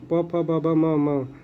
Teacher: प, फ, ब, भ, म, ओष्ठ होते हैं।